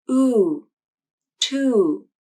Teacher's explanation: When the oo vowel comes at the end of a word, native speakers will hold out the vowel just a little bit, and the voice will glide down at the end. Oo, to. It's not oo with a short, flat voice, it's oo with an elongated vowel that glides down at the end. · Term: gliding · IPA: /u/